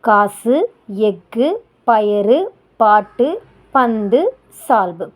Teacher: அந்த சொல்லோட இறுதியில இந்த ஆறு எழுத்தும் வரும்போது ஒரு மாத்திரைக்கு பதிலா அரை மாத்திரை அளவுதான் ஒலிக்கும் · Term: குற்றியல் உகரம்